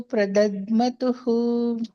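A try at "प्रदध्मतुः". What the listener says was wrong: ಪ್ರದದ್ಮತುಃ ದೊಡ್ಡದಾ ಇದೆ, ಸ್ವಲ್ಪ ಪ್ರೆಸ್ ಮಾಡ್ಬೇಕು. ಧ್ವಾ ಧ್ವಾ ಬರೀ ಮಾ ಕೇಳಿಸ್ತಾ ಇದೆ, ಧ್ವಾ ಹೇಳ್ಬೇಕು. ಪ್ರದಧ್ವ. ಪ್ರದಧ್ಮತುಃ.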